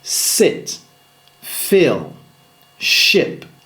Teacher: Le I court, c'est-à-dire le I relâché et détendu.